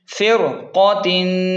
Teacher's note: صا، دال دو زیر دن، مر صادن، فا را زیر فر، قاف کی وجہ سے را موٹی ہوگی